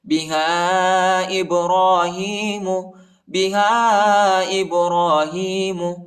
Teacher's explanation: ہاں کے بعد جو الف ہے اس کے اوپر جو ہے چھوٹا مد ہے، اس کو تقریباً 2-3 سیکنڈ تک کھینچیں گے.